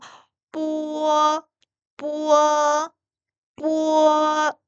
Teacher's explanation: 비읍이라 그랬잖아요. 그냥 비읍이 아니라 된소리 발음이니까 으가 내야 되겠죠. 그리고 마지막에는 워로 끝나면 됩니다.